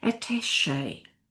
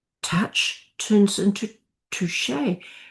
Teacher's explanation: So we get attach, add an E, and it becomes French, attaché, turning that CH into an sh sound. Touch turns into touché.